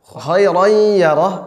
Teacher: masuk karena tanwin bertemu dengan ya, maka ya-nya dibaca dengan tasydid